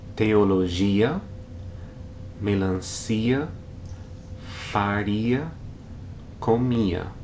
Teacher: When a word ends in the sequence IA, and the stress falls on the I sound, the vowel sounds are separated into hiatus and no written accent is used.